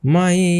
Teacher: এখানে কিন্তু ইয়ার উপরে ইয়াকে কিন্তু গুন্না সহ মিলিয়ে পড়তে হবে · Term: ঈদগামে বা গুন্না